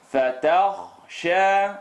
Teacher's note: The kha is heavy. I want to make the sound heavy.